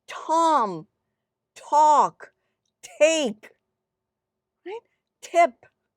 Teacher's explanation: There is a slight burst of air accompanying the production of this consonant. This is called aspiration.